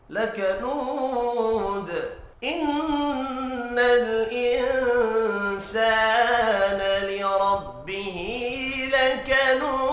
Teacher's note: وف کی صورت میں دال ساکن پڑھا جائے گا، دال ساکن ہو تو دال پر قلقلہ کیا جاتا ہے